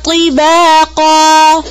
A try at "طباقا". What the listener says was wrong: طا کو موٹا کریں